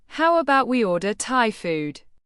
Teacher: Stress Thai food to highlight the alternative.